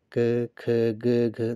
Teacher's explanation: जिन व्यंजन ध्वनियों के उच्चारण में जीवा के पिछले भाग से कोमल तालू का स्पर्श होता है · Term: कंठ व्यंजन